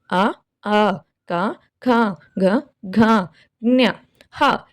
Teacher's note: కంఠ్యములు అంటే కంఠము నుండి పుట్టినవి అని అర్థం · కంఠ్యము అంటే కంఠము కంఠము నుండి పుట్టినవి